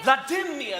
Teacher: The stress is on the second syllable of my name.